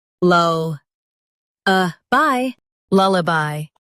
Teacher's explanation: Lullaby. Stress lull and soften uh bye.